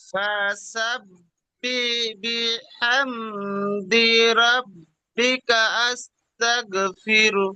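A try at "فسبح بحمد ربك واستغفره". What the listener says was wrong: আস্তাগ নেই, ওয়াস্তাগা আছে দেখেন, ওয়াও, ফির, ফির হু নয়, ফির।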